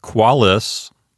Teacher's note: That's a two-syllable word, so the accent automatically falls on the first syllable. The first syllable is Q-U-A.